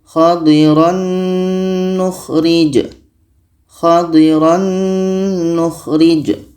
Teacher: Kebetulan tanwin ini di dalamnya ada bunyi nun, maka sudah otomatis masuk ke bunyi nun. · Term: idgham bi gunnah